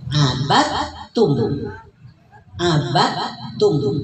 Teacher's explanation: Jadi tidak diqolahkan dalnya tapi langsung ke huruf ta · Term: idgam mutajanisain